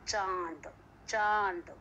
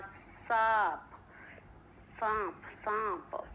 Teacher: इसका जो है अनुनासिक का उच्चारण जो है नाक और मुंह दोनों से होता है।